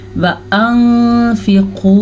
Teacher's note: नून साकिन के बाद फ़ा हरुफ़ इख़्फ़ा में से है, तो हम नून साकिन को छुपा के लेकिन गुन्ने के साथ पढ़ेंगे